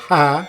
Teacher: in the bottommost part of the throat there is a slight closure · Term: aspirate